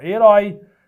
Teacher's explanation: herói é uma oxítona que termina com esse ditongo aberto, ó. Herói.